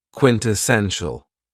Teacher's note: this word has four syllables and the stress is on the third syllable